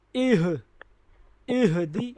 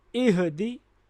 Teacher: ہا کی آواز गले के सबसे निचले वाले हिस्सा से निकालेंगे